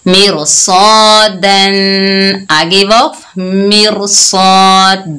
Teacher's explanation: रा साकिन से पहले जेर है, आगे हरूफे इस्ताला में से सौद आया तो हमने रा को पुर पढ़ा